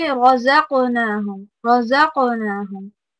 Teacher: So you need to say رَزَقْنَاهُمْ رَزَقْنَاهُمْ, not with the tongue in between the two sets of your teeth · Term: buzzing bee zai